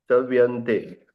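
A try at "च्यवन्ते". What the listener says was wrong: ચવ્ય થઈ જાય છે, ચ્યવંતે.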